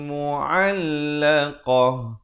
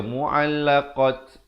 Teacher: Dan ta marbutah bila waqaf ditukarkan kepada bunyi ha. Jangan baca mu'allaqat, itu tak betul.